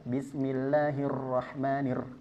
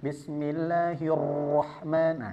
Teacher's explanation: dia memiliki sifat takrir artinya bergetar tapi getarannya jangan begitu kuat